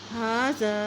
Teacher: ہا کے پر کھڑی زبر ہے، ایک حرکت لمبا پڑھیں گے، خالی الف سے پہلے زبر آتی ہے تو اس کو بھی ایک حرکت لمبا پڑھیں گے۔